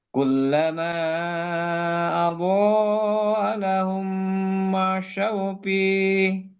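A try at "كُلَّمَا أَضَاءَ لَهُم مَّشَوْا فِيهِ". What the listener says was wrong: Masih F-nya fa. Masyaufi. Masih jadi P, Pak.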